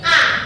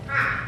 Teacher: Hati-hati cara membunyikan alif dengan ain. Kalau ini a tanpa ada tekanan. Kalau yang ain yang melengkung a.